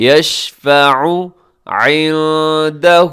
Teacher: نون ساکن کے بعد دال ہے عندہ میں، تو یہاں پہ اب کیا کریں گے؟ اخفا کریں گے